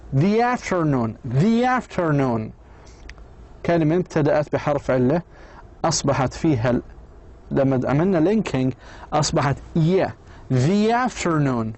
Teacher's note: Linking the to a word that begins with a vowel sound except long e a requires pronouncing the final sound of the word as the the final the pronouncing the final sound of the word the as a long e